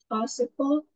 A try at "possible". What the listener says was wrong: Nè, con sẽ thấy nè, con đừng có đọc cái chữ bồ nó lớn lên, con nó sẽ âm trọng âm nó rơi ở phía trước nè.